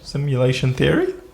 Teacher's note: this is called simulation Theory yeah with a rising tone at the end